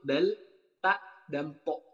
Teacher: Jadi ketika lidah dihimpitkan dengan dihimpitkan dengan kulit gusi atas. Maksudnya, bunyi huruf-huruf tersebut keluar dari ujung lidah serta menepati dengan pangkal 2 gigi seri yang di atas. Jadi, misalnya ini gigi seri nih dan ini lidah.